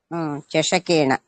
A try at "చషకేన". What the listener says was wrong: చషకేన నకారం మామూలు నా పెట్టండి, ఏనా చేరుతుంది అనమాట.